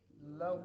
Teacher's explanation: واو کو اگلے لام کے ساتھ ملانا ہے